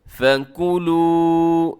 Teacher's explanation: لمبا کیجیے گا، واو مدہ ہے آخر میں